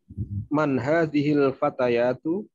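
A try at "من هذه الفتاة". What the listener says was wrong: Nah, itu kan nggak ada yaknya itu.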